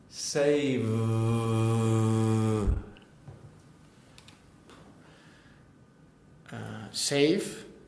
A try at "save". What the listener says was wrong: Getting there. Push more on the vibration.